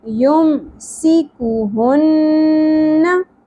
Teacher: सीन सीटी की आवाज़, काफ बारीक, ह अक्सा हलक से और नून मुशद्दद के ऊपर गुन्ना